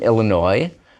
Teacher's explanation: we just don't pronounce that S at the end because it's French